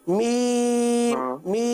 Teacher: मीम में होठ गोल नहीं होंगे